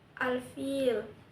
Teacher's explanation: hukumnya adalah izhar qamariyah karena dalam ta'rif bertemu huruf fa, dibaca jelas dan terang.